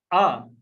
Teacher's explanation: आ तो जीभ का बीच वाला भाग क्रियाशील रहता है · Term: मध्य स्वर